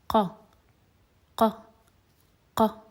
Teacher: You can feel almost the root of your tongue touching or pressing against the soft palate. And it's very similar to the K sound in English, only that it's a bit deeper.